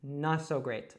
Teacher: so that's a glottal t and we kind of drop it all together